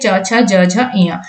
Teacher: इनका उच्चारण स्थान क्या होता है, तालु होता है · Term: च वर्ग